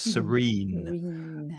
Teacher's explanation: and the second E is pronounced longer.